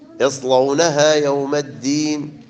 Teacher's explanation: اللام مغلظة لأن قبلها حرف الصاد